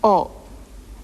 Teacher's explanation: this must be a short clipped sound be very careful not to lengthen it into the dip thong